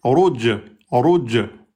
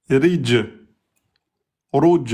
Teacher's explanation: le ra quand il porte damma, emphatique. Le ra quand il porte kasra, aminci.